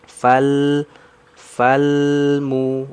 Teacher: Jadi dia alirannya sedikit saja karena dia memiliki sifat tawasud lalu huruf lam dia istifal ya istigfal lidahnya turun berarti tipis